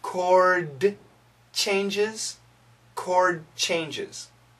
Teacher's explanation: So what happens is this ch sound makes the D sound weak. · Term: D sound is really weak